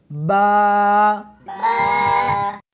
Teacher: حمزہ، یا، یا، الف، اس حرف کو دونوں ہونٹوں کے ساتھ ملا کر پڑھیں گے